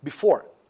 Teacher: okay because before uh has got two uh syllables and here the stress the emphasis the focus is on the second part of the word which is the second syllable